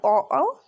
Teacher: अब आते हैं कंठ तालु पर, तो जिसमें कंठ और तालु, ठीक है, उन दोनों का उपयोग हो वहां पर ए होगा। वैसे ही कंठ ओष्ठ, कंठ और होठ दोनों का उपयोग हो वहां पर ओ होगा।